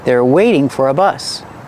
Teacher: in a continuous form the T changes to a fast D